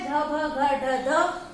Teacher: संवार नाद घोष और महाप्राण